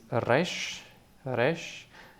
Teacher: R is pronounced in the throat kind of like in German